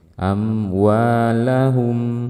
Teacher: Kalau berhenti maka kita hanya perlu mengalirkan sedikit suara mimnya amwahum jadi mengalir suara mim di sini dengan di sini sama